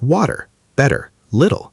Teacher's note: The t in the middle often sounds more like a soft d. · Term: flapping, flapping sound